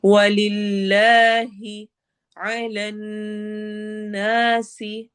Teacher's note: अलिफ मद्दा और सीन में सीटी वाली आवाज होगी